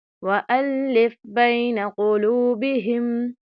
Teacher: واؤ مدہ ہے، پیش ہے اس سے پہلے، تو ہم نے یہاں پر ایک الف کے برابر لمبا کرنا ہے